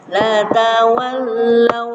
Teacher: Wau mati ketemu wau berarti agak-agak ditahan ya